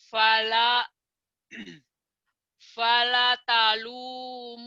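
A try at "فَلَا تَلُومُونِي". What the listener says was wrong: Langnya panjang. panjangnya yang mana? Satu la. Kedua lu, mu, ni, lu, mu. Berarti ini pendek, ini pendek, ini pendek.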